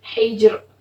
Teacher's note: را ساکن سے پہلے والا حرف ساکن اور اس سے پہلے زیر ہو تو بھی را جو ہے باریک پڑھی جائے گی